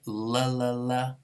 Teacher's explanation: a lateral approximant for all of these that's going to be air flowing out around the side of the tongue between the tongue and the teeth and out the front that's what makes it kind of this l-like sound a lateral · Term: alveolar lateral approximant